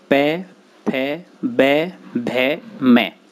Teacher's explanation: इन वर्णों को ओष्ठ कहा जाता है। इनके उच्चारण में जिह्वा के सहयोग से दोनों ओष्ठ परस्पर मिल जाते हैं।